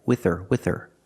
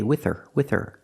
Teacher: the H is silent because her is not an important word it's not stressed we don't pronounce the h we say with her with her